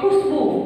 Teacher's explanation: ख में ह्रस्व उ यानी कि छोटा उ है, लेकिन ब में बड़ा उ है दीर्घ उ, और सब के सब सब बोला जाता है उच्चारण में आधा, लेकिन लिखते हैं तो वह पूरा होता है।